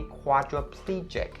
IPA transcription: ˌkwɑː-drə-ˈpliː-dʒɪk